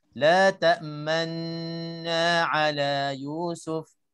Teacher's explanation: Cara yang kedua, kita muncung bersama dengan dengung 2 rakaat. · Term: ismam